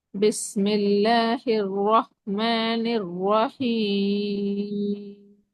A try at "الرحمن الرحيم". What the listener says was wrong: ம் அதுலேயும் அதே தானா? ராவ நீட்டிக்கணும்.